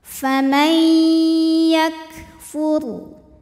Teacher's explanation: May ada hukum idgham bil gunnah karena ada nun sukun menghadapi huruf ya. Maka cara bacanya bunyi nun dileburkan ke ya disertai bunyi dengungan. Jadi kita tahan.